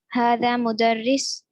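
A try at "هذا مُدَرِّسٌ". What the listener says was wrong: Okay, again, make sure to say the tanween because this will tell us this is a teacher. Okay, hada mudarrisun.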